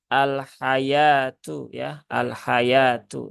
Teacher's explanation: Jadi di sini wawunya dia tidak tidak dibaca, jadi jangan dibaca al-hayawatu